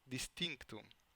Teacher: When the model deleted, for example, the velar stop k in the word distinctum, the network reconstructs an alveolar nasal matching the following consonant